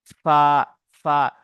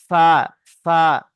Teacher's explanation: নিচের ঠোঁটের ভিজে অংশ এবং সামনের দুই দাঁতের আগার সাথে লেগে ফা উচ্চারণ হয়। ফা, ফা। দেখুন এই যে দুটো দাঁত নিচের ঠোঁটে ভিজে অংশ লাগছে, তাই না? · হ্যাঁ, আবার মুখস্থ করে নিন একবার, যে নিচের ঠোঁটের ভিজে অংশ এবং সামনের উপরের দুই দাঁতের আগার সাথে লাগিয়া ফা উচ্চারিত হয়